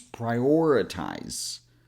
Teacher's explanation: This ends with a Z sound, not an S. So your vocal cords are vibrating a little.